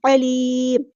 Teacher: اور یہاں پہ مد عالد بھی ہوگی، یاد رہے یہاں پہ میم کو ساکن کریں گے وقف کرتے ہوئے، نہ کہ میم کی ایک پیش پڑھیں گے